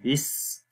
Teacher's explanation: اب تسمیہ پڑھتے ہیں، تسمیہ بسم اللہ الرحمن الرحیم کو بولتے ہیں، بسم اللہ، با کے نیچے زیر ہے جس کو سین کے ساتھ ملائیں گے، بس، سین کی آواز کے اندر سیٹی کی آواز آئے گی